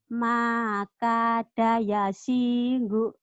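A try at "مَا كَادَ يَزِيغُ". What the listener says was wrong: Maka ada yazi, bukan yaji, yazi, zai. Bukan yasi, yazi, zai.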